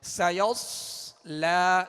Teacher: سیصلا میں سین کو باریک پڑھیں گے مگر سیٹی کی آواز میں